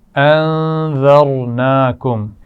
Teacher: نون پر غنہ ہے، را کو موٹا پڑا جائے گا